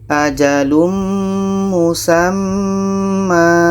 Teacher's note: Jadi untuk mudah fahamnya, tanwin ini kita buang 1, kita ganti dengan alif. Jadi ma ini dibaca panjang. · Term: mad iwad